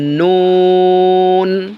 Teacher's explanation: 9 number মাখরাজ জিহ্বার আগা তার বরাবর উপরে তালুর সঙ্গে লাগাইয়া জিহ্বার আগাটা উপরে তালুর সাথে লাগাই দেবেন, সহজভাবে বলে দেবেন নুন।